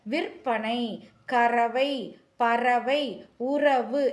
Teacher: நாக்கோட நுனி மேல் அண்ணத்தோட நடுப்பகுதி மையம்னா நடுப்பகுதியை உரசுவதால் வல்லின ரகரம் பிறக்கிறது · நாவின் நுனி அதாவது நாக்கினுடைய நுனி மேலன்னத்தில் மையப்பகுதியை உரசுவதால் ரகரம் பிறக்கிறது.